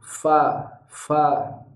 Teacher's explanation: Kita lihat di sini ujung gigi seri atas ada garis penghubung ke bibir bawah bagian dalam, berarti makhraj fa adalah ujung gigi seri ke bibir bawah bagian dalam. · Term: huruf fa